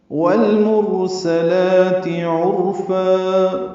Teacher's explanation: والمرسلات عرفا، واو کو لام سے ملانا ہے، لام ساکن پہ اظہار، را پر سین باریک پڑھیں گے، لام بھی باریک ہے، 2 حرکات لام کو لمبا کریں گے، تا کی زیر کو معروف طریقے سے پڑھیں گے، عرفا میں عین وسط حلق سے ادا کریں گے، را پر پڑھیں گے عین کی پیش کی وجہ سے، اور فا مد عوض الف مدہ 2 حرکات لمبا کریں گے وقفاً۔